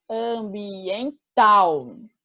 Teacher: No caso de ambiental, a sílaba tônica é tal